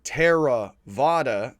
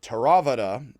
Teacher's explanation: in japanese and in other languages uh as in the pali and sanskrit terms that we're going to be learning for buddhist philosophy you would put equal emphasis on every syllable so instead of saying tara vada you would say teravata and · you would put equal emphasis on every syllable. So instead of saying Theravada, you would say Theravada.